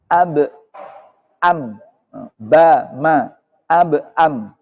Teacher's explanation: ba dan mim itu sama-sama di bibir